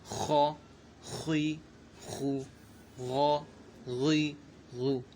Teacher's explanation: یہ دونوں حرف حروف مستعلیہ میں سے، تو انہیں ہمیشہ پر یعنی موٹا پڑھنا ہے